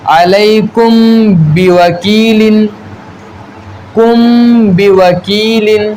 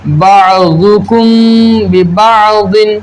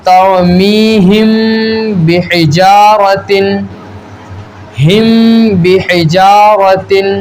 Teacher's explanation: جیسے کہ ہم بمؤمنین، اور جیسے بعضکم ببعض، تو دیکھیں میم ساکن کے بعد با آیا، تو اب یہاں میم ساکن میں اخفاء شفوی ہوگا، یعنی غنہ کر کے پڑھیں گے۔